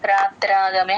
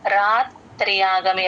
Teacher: త కింద రకారము య వత్తు రెండు వినిపించాలి ఇక్కడ యూజువల్ గా ఏమ మిస్టేక్ చేస్తారంటే యా వత్తు వదిలేస్తారు రాత్రాగమే అనేస్తారు.